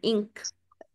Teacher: आपने फौरन हमजा की जेर पढ़ के काफ के मखरज पे चले जाना इंक ये मखरज पे जाने का तरीका जब आप इंक कह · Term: इख्फा